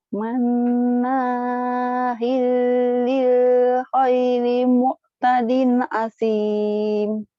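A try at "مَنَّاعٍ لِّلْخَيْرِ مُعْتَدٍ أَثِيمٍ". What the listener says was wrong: Manna'il, bukan manahil ya. Manna'il. Ain. Manna'il lil khairi mu'tadin asim.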